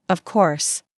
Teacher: When they are certain, their voice goes down strongly.